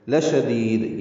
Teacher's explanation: لشدید یہ لا شدید نہیں پڑھنا، لام لمبا نہیں کرنا